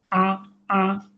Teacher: বৈশিষ্ট্য হলো কণ্ঠনালীর মাঝে হালকা চেপে পাতলা করে উচ্চারিত হবে। এটা পাতলা হরফ, শক্ত করা যাবে না। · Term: আইন